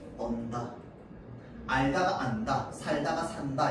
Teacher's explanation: 어간의 리을 받침 뒤에 니은으로 시작하는 어미가 오면 어떻게 된다고? 리을이 탈락한다고.